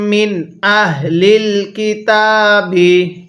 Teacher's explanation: এই তা এর মধ্যে এক আলিফ টান দিব